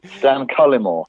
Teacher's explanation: I stress the first syllable